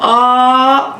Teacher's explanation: आ इसको बोलने में 2 मात्रा का समय लग रहा है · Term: दीर्घ